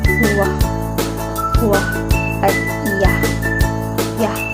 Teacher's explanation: Naiiba ang katinig na Y at W dahil nagkakaroon dito ng galaw mula sa isang posisyon ng labi o dila patungo sa ibang posisyon. Nagkakaroon ng glide o pagkakambyo ang W mula sa puntong panlabi samantalang kabaliktaran naman ang Y dahil papalabas ito.